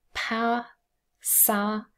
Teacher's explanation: There is no period mark to show any syllable boundaries. One syllable, and ow and a together form a triphthong in both of those words.